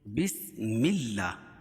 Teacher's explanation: بسم اللہ الرحمن الرحیم۔ بسم اللہ، اللہ کے لام سے پہلے زیر ہو تو اللہ کا لام باریک ہوتا ہے